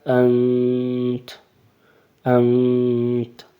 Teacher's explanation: نون کی واضح آواز نہیں نکالنی، ہلکی سی آواز نکالنی ہے، ناک میں لے کے جانی ہے